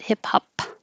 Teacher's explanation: Hip hop, the final P, just close your lips and don't release it